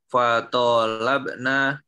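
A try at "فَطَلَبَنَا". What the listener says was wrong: fatolaba semuanya fathah bukan sukun mbaknya.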